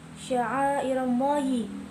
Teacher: Sya'airallahi, hukum bacaannya mad wajib muttasil karena ada huruf mad tabi'i bertemu dengan hamzah pada satu kata. Cara bacanya dipanjangkan 4-5 harokat